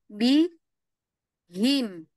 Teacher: Ha hanya menyuarakan dari tenggorokan saja